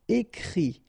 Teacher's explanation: Okay, and then the IT, phonetically you pronounce I because final T is not pronounced